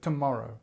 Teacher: The stress is on the morrow, and this t is our schwa.